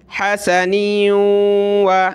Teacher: نون کو واو کے ساتھ ملا کر ناک میں آواز پیدا کریں گے